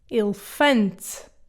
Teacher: The first E is closed, the second and the last are reduced.